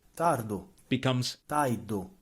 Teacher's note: In the Palermo dialect, when r is followed by a consonant, it's pronounced like e.